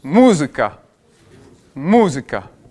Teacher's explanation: avec un accent tonique sur la première syllabe